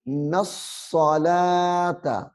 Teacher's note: ہے، اس کو موٹا کر کے پڑھنا ہے، یقیمون الصلاۃ، نص، نون کو صاد کے ساتھ ملانا ہے، یعنی صاد مشدد ہے، سختی سے پڑھنا ہے